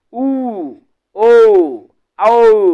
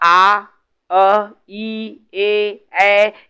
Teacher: जब हम कोई भी शब्द वर्ण का उच्चारण करेंगे, हमारे जो होठ है एकदम गोलवा बन जाए वृत्त के आकार में, तो उसको वृत्तमुखी बोलेंगे